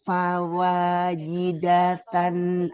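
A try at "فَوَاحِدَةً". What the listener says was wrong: Fawahidatan, bukan fawajidatan. Ya, nggak ada titiknya Ibu. Fawahidatan.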